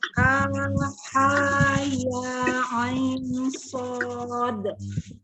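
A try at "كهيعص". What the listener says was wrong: Yang ainnya, yang ainnya juga nggak ada dengung ya, harusnya dengung. Jadi panjang dulu, dengung, baru kemudian panjangnya sod.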